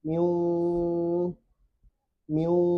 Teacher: Tidak tasydid ini. Kenapa tidak tasydid? Karena masih ada sifat dengung dari nun. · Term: idgham bi gunnah